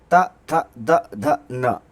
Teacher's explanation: त वर्ग, त, थ, द, ध, न, ये दांतों का स्पर्श करते हैं